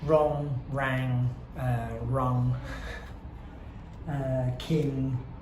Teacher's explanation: we want to get the nasalness coming from the N sound, but also the throatiness coming from the g sound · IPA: /ŋ/